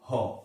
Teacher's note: अगर आप ह का उच्चारण करेंगे तो आप देखेंगे कि ना ही जीभ उसमें आता है, ना कंठ आता है, ना तालु आता है, ना दंत्य, ना ओष्ठ, बिना किसी की सहायता से ही इसका उच्चारण होता है। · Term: काकल्य ध्वनि